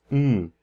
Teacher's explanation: a nasal bilabial is something that where your lips are closed and the air goes through your nose.